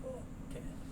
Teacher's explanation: The L is not sounded, so you get talking.